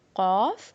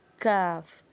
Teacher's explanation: جو نقطوں والا ہے وہ موٹا پڑھا جاتا ہے، پر پڑھا جاتا ہے، اور دوسرا جو کاف ہے وہ باریک پڑھا جاتا ہے. ٹھیک ہے، قاف، کاف.